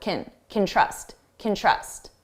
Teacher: I don't know if we can, if we can trust, if we can trust and notice you hear trust more because it's the main verb and can, which sounds like kin, is very short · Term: very unstressed sound